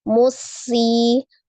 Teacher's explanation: Ditasdidkan ke huruf sam, musi, di huruf sin ya, ditasdidkan ke huruf sin, musi. Sinnya dialirkan. Ada al-hams, ada roqwa, as-safir ya.